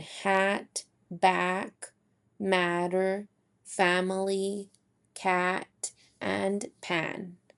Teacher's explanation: Our tongue is also lower than with the eh and is centered. This is also considered a lax phoneme. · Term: ah sound